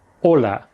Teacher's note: It's important here not to confuse it with the Spanish hola, which has its emphasis on the first syllable